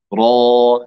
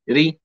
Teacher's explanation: يصاحب الراء المفخمة تقعر لوسط اللسان